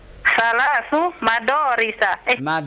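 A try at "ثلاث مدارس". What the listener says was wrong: Nah, هذا ليس الضاد وإنما الدال.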